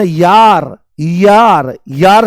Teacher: य बोलते ही ई की ध्वनि आती है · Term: अर्धस्वर